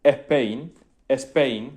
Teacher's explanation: Y es entonces cuando si yo le digo a mi padre o a mi tío que pronuncie la palabra Spain, España en inglés, me van a decir Spain, Spain, me van a meter una E protésica ahí delante